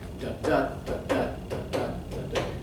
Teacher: So an unstressed syllable followed by a stressed syllable, like da-da-da-da-da-da-da-da. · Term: iamb